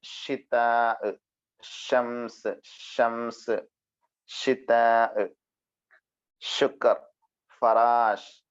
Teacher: ഷ വരുന്നത് നാവിന്റെ മധ്യവും അതിനു തൊട്ടുള്ള മുകൾ ഭാഗവും മേലെണ്ണാക്കും ചേർന്നത്